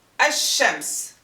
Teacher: Lam is gone. We don't pronounce it at all.